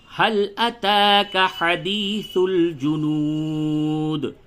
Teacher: تا کے اوپر کھڑا زبر ہے، تھوڑا کھینچ کر کے پڑھیں